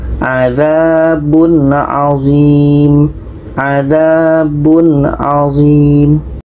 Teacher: Tanwin bertemu a tidak dengung.